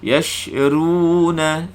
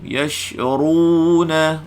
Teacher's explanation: Kalau naik, kalau pangkal lidah berada di atas, bermakna huruf ra tadi dibaca dengan tafkhim. Tetapi kalau pangkal lidah berada di bawah, maka ra tadi dibaca dengan tarqiq, nipis.